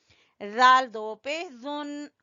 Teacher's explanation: जाल को जबान की नोक और सामने वाले दो दांतों के सिरे से